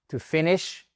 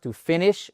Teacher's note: accentuation sur la première syllabe